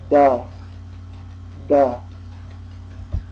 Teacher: The tongue comes to the bottom of the top teeth. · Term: dentals